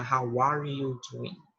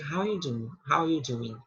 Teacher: Na fala, você pode até cortar esse are aqui e dizer how you doing. E não pronunciar how are you doing, tá?